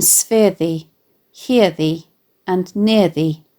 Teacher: which necessarily has its stress on the penultimate syllable dum dee rather than the last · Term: feminine rhyme